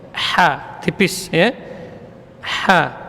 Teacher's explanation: Wa min syarri, ha, huruf yang keluar di tengah tenggorokan, ya, ha, huruf hamas dan rakhawah, keluar dorongannya dari tengah tenggorokan, ha, tipis, ya, ha, panjang dua harokat, nah ada alif mad sebelumnya fathah.